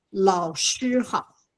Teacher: the third tone is only slightly down